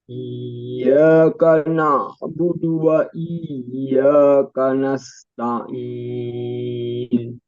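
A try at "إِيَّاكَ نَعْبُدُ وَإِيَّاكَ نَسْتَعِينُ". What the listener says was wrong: Nah, sedikit huruf na juga. Iyyaka na, kana enggak tipis. Iyyaka na, kana abudu. Iyyaka na'budu wa iyyaka nasta'in.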